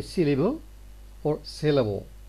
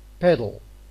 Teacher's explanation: the l here tends to be dark and it is at the same time syllabic because it's the most important bit of the syllable here syllable